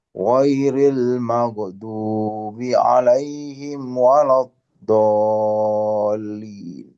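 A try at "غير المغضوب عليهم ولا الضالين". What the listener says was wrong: Ghairil al-maghdu tidak perlu dipantulkan. Nah, ghairil maghdub al-maghdubi alaihim waladdallin. Oke, ingat al-maghdub tidak perlu lagi dikolkolahkan.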